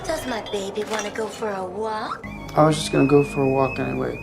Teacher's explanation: in the word for, native speakers, again in casual speech, in their everyday conversations, unless they're trying to emphasize the word, they will not pronounce the word for as for. Instead, they will say fur. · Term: weak form